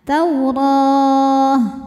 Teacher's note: Matobi'inya fathah panjang pada huruf ro, huruf yang disukunkannya ta. Jadi kalau berhenti ro-nya jadi panjang 2, 4 atau 6 harokat asal konsisten dalam sekali bacaan. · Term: mad arid li sukun